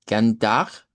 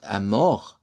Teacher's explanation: deberíamos hacer el cambio en las Rs para que se marquen Rs uvulares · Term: R uvular